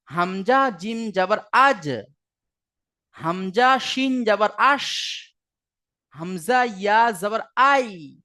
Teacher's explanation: জিহবার মাঝখান এবং তার বারবার উপরের তালুর সাথে লাগিয়ে উচ্চারিত হয় জিম শিন ইয়া। আপনি ওই ধাঁজে পড়বেন হামজা জিম জাবার আজ, হামজা শিন জাবার আশ, হামজা ইয়া জাবার আই।